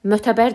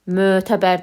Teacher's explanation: Mötəbər sözün tələffüz eləyəndə mötəbər demirik, mötəbər deyirik, ö uzanır.